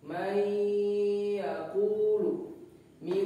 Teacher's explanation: huruf nun mati bertemu dengan salah satu huruf idgam b gunah dibacanya seperti berdengung atau ditahan dua harkat